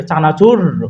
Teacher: কম্পিত ব্যঞ্জন হচ্ছে আমাদের র